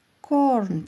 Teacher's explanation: R deyarli talaffuz qilinmaydi, bir miqdor cho'ziladi